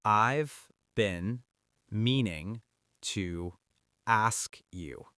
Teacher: Notice how native speakers do not pronounce every single word with equal weight. The word been shrinks down. It doesn't sound like bean, it sounds like been.